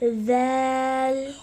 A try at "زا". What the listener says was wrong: زا زا کو تھوڑا سا سختی سے ادا کرنا ہے. ذال کو سافٹ پڑھنا ہے، دال کا جو فرینڈ ہے ذال اس کو سافٹ پڑھنا ہے. دال ذال، ٹھیک ہے.